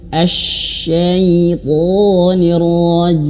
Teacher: Ketika shin itu harus betul-betul mengeluarkan angin.